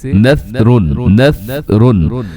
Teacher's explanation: سیٹی ختم کرنے کا طریقہ یہ ہوتا ہے کہ آپ نے جو اپنی زبان ہے وہ دونوں دانتوں کے درمیان لے کے آنی، یعنی زبان تھوڑی سی باہر بھی آ جائے تو اس سے یہ ہے کہ سیٹی کا خاتمہ ہو سکتا ہے۔